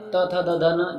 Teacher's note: दंत में त थ दध न जिसे हम त वर्ग भी कहते हैं